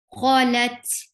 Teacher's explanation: Ta will get sifa of hums, and hums is a flow of breath. Qalat, la, short.